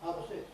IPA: ˈhɑː pə ˈsɪks